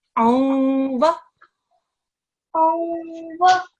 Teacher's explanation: The unsound that you would normally make with this tanveen, you don't say the noon fully, you don't drop it. You do a half noon sound. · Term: Idgham naqis